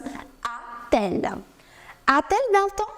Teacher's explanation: L is beginning with a vowel. So again, there is a clash of two vowels. You will add T in between and it becomes a-t-elle.